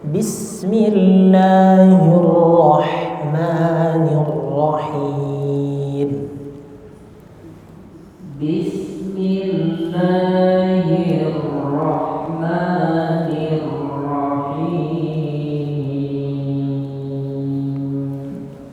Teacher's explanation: Kemudian di Ar-Rahman Ar-Rahim huruf ra-nya takrirnya jangan terlalu banyak, secukupnya aja.